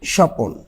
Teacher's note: যখন কথা বলব তখন মাঝখানে অতিরিক্ত একটা স্বরধ্বনির আগমন ঘটবে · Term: মধ্য সরাগম